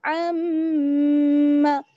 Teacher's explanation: तो आइन का मखरज आपको मालूम है, हलक का दरमियानी हिस्सा, अम्मा, और मीम पर जब शदा जाती है तो वहां पर गुन्ना होता है। गुन्ना यानी नाक में आवाज लेकर जाएंगे और एक अलिफ के बराबर ठहरेंगे